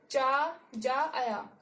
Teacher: देखिए चा वर्ग का उच्चारण करके देखिए, तालू से हमारी टंग जो है तालू से टच हो रही है